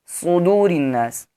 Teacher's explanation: صاد کو بھی موٹا یعنی پر پڑھیں گے کیونکہ یہ حروف مستعلیہ میں سے ہے